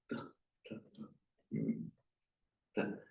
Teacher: dental because the tip of the tongue is behind the upper teeth